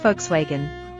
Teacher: The V sounds like an F, and the W sounds like a V.